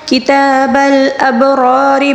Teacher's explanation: کتاب الابرار با کے اوپر ساکن ہے، اس کو قلقلے کے ساتھ پڑھیں گے